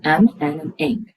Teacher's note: M, N, and ing are all nasal consonants, are all where the airflow goes through the nasal cavity. Now, when you produce M, N, and ing, they are all in different placements.